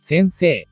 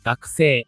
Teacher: kahit na nagtatapos sa patinig na i, humaba lang ang tunog ng e, at hindi naging tunog a.